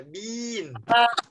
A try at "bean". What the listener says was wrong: Rồi, kéo dài ra, đậu, đậu, đậu. kéo dài ra nào.